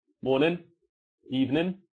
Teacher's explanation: we often don't pronounce the G on the end of the word